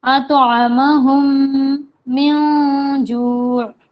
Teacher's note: میم کے بعد جب میم آتا ہے اس طریقے کا تشدید والا تو ہوتا ہے گنہ، آواز ناک میں جائے گی، جیسے ہم پنکھا بولتے ہیں اس طریقے سے.